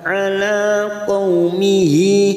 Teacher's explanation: Ala qaumihi, qaumihi ada hadamir yang berharokat panjang, damat yang di bawah ini asar berdiri. Mihi 2 harokat kita panjangkan, mad silah khosiro.